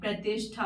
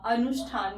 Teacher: ई या ऊ के बाद दंत्य स आ जाता है तो उसका क्या हो जाता है, मूर्धन्य स हो जाता है